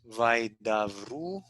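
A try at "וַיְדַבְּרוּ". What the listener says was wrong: The middle letter is doubled, and that's Nagesh. It's not a V. What is it?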